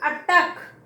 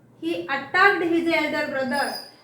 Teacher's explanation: And also the stress is on the second syllable attack.